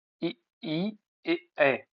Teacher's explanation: जिन स्वरों के उच्चारण में जीभ का अगला भाग ऊपर नीचे उठता है, अग्र स्वर कहे जाते हैं।